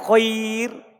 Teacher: kalau antum tidak monyongkan mulut setelah Khoir berarti itu namanya sukun murni